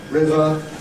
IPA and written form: ˈrɪvə (river)